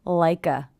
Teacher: Also, again here we have ending consonant sound, beginning vowel sound, like a. I hear the K linking to the schwa, like a.